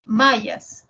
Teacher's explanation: la M es una nasal bilabial y la ya es una fricativa palatal y la S es una fricativa alveolar